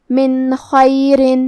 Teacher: خا حروف الاظہار میں سے ہے تو ہم حرف النون کو ظاہر کریں گے اور بغیر غنہ سے یہ حکم کو ادا کریں گے